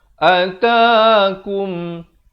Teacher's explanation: Jangan panjang. Yang panjangnya ta saja 2 harakat. Atakum. Bunyi saja kum sempurna terus masuk.